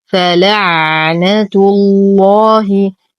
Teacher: ننتقل من ضمة التاء إلى تشديد اللام المفخمة في اسم الجلالة جل في علا لأنها سبقت بالضم.